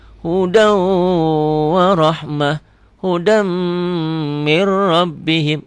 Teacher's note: Di idgham biguna boleh ya. Ada dengungnya ditahan.